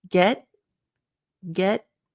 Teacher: your tongue still goes in the T position but there's no air